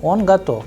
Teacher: the sound of ve is changing into f